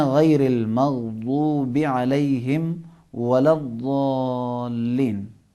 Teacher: 3 حروف تھے جن میں زبان باہر آتی تھی، ثا، ذال اور وا، اور اس کے بعد حرف ضاد کو زبان کی نوک یا زبان کی سائٹ کے دانتوں سے جہاں بھی لگے حرف ضاد کو تھوڑا سا موٹا ادا کرنا ہے